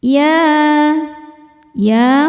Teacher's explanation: Sebab ada huruf ya dengan harakat fathah panjang. Cara bacanya dipanjangkan dua harakat. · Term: mad thobi'i muqaddar